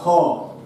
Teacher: একটা ব্যঞ্জন রয়েছে যে ব্যঞ্জনটা কণ্ঠনালীর মধ্যে উচ্চারিত হয়, তাকে আমরা বলছি কণ্ঠনালীয় ব্যঞ্জন, এবং এই ব্যঞ্জনের সংখ্যা একটি, সেটি হচ্ছে কি না হ।